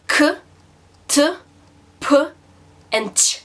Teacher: all these sounds have a lot of air coming out of you when you say them